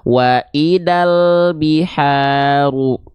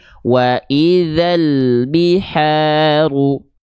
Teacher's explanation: jangan sampai teman-teman melafalkan huruf dzal dilafalkan berubah menjadi huruf dal. Ini kesalahan besar pertama.